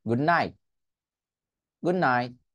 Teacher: তার মানে এই যে আমি লাস্ট পয়েন্টে গিয়ে এই যে জিহ্বাটা লাগিয়ে ফেলছিলাম, বাট আমি টিটা উচ্চারণ করতে পারি নাই, করি নাই। That's called stop টি।